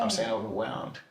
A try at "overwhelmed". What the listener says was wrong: Whelmed. You still saying, okay, it sounds like you're saying whelmed. No, whelmed. Overwhelmed.